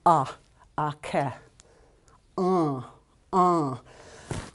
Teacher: you block the back of your nose off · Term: nasalized a